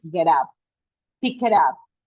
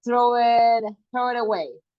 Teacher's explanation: For example, when we say get up, we link these two. We don't pronounce them separately. Okay, so you say get up, pick it up. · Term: linking